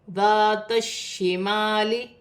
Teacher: شین مشدد ہے، شین کو تا کی حرکت کے ساتھ ملا کر پڑھا جائے گا